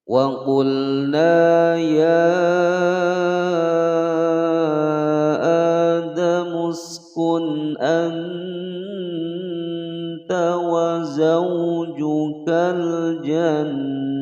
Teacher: Ya di sini dibaca panjang 5 harokat.